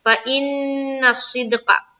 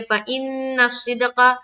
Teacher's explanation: فإن میں نون مشدد کا غنہ کرے